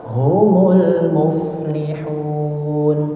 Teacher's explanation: Jangan terlalu lama ditahan di huruf lam.